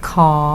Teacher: KǑR is pronounced with rising tone.